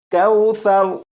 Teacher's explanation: سا کو نرمی سے پڑھیں گے، یعنی سیٹی کی آواز کے بغیر پڑھیں گے